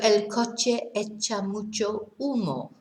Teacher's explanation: we don't pronounce our H's in Spanish